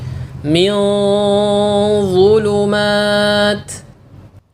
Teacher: gunahnya lebih lama dibandingkan gunah pada nun sukun yang dibaca jelas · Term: gunah yang sempurna